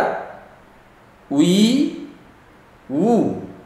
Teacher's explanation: bibir atas bibir bawah ketemu di depan